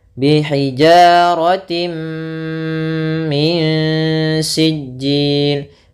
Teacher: Idgham bi gunnah nanti itu khusus di sini, yaitu adanya tanwin bertemu dengan mim, ini idgham bi gunnah. Yaitu jelas masuk tanwinnya ke mim.